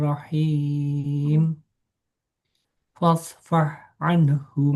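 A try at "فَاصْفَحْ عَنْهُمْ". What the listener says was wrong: Nah, fa-nya tipis. Fasfah. So-nya tebal.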